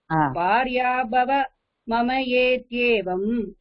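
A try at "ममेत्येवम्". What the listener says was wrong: don't split the word here while you are reciting மமேத்யே. ஆமா, ஒண்ணா படிக்கலாம்.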